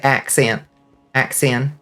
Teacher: You don't pronounce the T in accent.